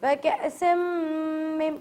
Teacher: پہلے تو سین میم ملا کر اس پہ غنہ کیا، وَكَأْسٍ روکا، اس کے بعد من معین نہیں پڑھا بلکہ ہم نے اسے مم معین پڑھا.